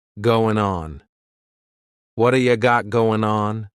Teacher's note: we're going to drop that g at the end of the word going